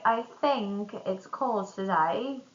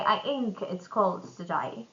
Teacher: dropping the TH sound completely. So instead of saying I think it's cold today, someone will say I ink it's cold today, which sounds really funny.